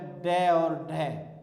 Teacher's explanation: इसका उच्चारण जीभ ऊपर उठकर मूर्धा को छूकर तुरंत गिरती है। मूर्धा को छूकर तुरंत जब गिर जाती है तो वहां पर द्विगुण व्यंजन होता है।